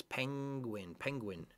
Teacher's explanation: we do not really separate the N and the G when you pronounce penguin. It's not penguin, like in Spanish, penguin.